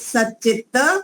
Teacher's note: त वर्ग का च वर्ग हो जाएगा